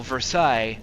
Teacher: Versailles, you're not going to pronounce the S at the end